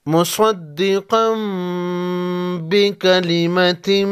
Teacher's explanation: مصدقا تنوین کے بعد با ہے اقلاب ہوگا. تنوین کے نون کو میم میں بدل کر غنہ کے ساتھ پڑھیں گے